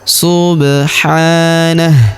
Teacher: Huruf ba berharakat sukun kita pantulkan atau kita qalqalahkan. Subhanah. Huruf ha kita panjangkan dua harakat karena terdapat alif kecil di atasnya.